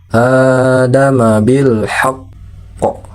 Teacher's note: Kemudian untuk qalqalah kubra yang lainnya adama bil haqqi itu dibaca adama bil haqqo gitu. Jadi beri sedikit jeda karena dia bertasydid.